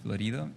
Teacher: People have a really hard time, if they don't speak Spanish, doing the rolled R next to the soft D, Florido. So it would come out as things like Florido, you know.